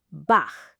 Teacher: This comes after the vowels a uh and the combination. It sounds like you are very gently clearing your throat. Not a big dramatic throat clear, just a soft friction sound at the very back like this.